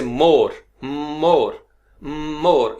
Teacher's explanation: आपका होंठ जुड़ेंगे और नाक में से नेजल साउंड निकलेगी।